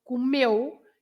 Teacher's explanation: The stress is on meu, not comeu.